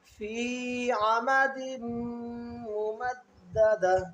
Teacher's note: یہاں پر دال اور میم پر ملائیں گے تو غنہ کریں گے